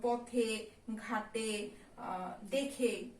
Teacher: পদের শেষে এ ধ্বনির উচ্চারণ সংবৃত হয়, যেমন পথে, ঘাটে, দেখে ইত্যাদি।